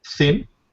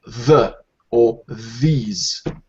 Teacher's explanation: We have two different TH sounds. The soft, or the unvoiced, and the voiced.